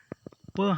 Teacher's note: प हमारा अल्प प्राण में आता है